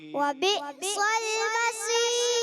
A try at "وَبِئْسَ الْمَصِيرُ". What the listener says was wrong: پیارے بچے پہلے سین ہے پھر صاد ہے، تو آپ ایسے لگ رہا ہے پہلے صاد پڑھ دیتے ہیں پھر سین. وبئس المصیر، ٹھیک ہے. وبئس المصیر. را کو باریک بھی رکھنا ہے. وبئس المصیر. چلے اس پر آپ نے پریکٹس کرنی ہے، محنت کرنی ہے، پھر یہ باریک ہو جائے گا، ٹھیک ہے.